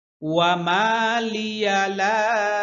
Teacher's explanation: ওয়া, ওয়া বললে ঠোঁট, দুই ঠোঁট গোল হবে। হুম, লিয়া লা, এখানে চিকুন চিহ্ন, এখানে তিন আলিফ টানতে হবে।